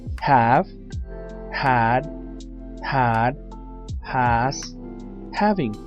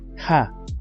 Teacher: Inicia con una H que normalmente en inglés suena como en el sonido de una J en español Ja y termina con una v y una e la letra